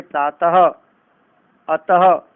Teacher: विसर्ग, जिसमें अंत में ह की ध्वनि आती है, जैसे प्रातः, अतः।